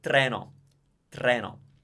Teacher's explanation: it never becomes a ch sound, basically, Italian T. It's always t.